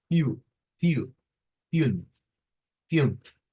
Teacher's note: Entonces, siempre que vean esa U así, la forma más fácil de sacarla, la U con la diéresis, es pensar en una I y una U juntas.